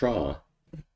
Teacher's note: Sha is a good retroflex sound.